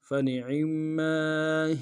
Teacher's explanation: عین کو گہرائی سے ادا کرتے ہوئے میم کے ساتھ ملانا ہے، میم کے اوپر تشدید زور دیں گے